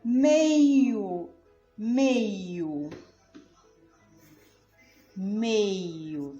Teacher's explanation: Foi mais demorado o MEI, né? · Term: sílaba tônica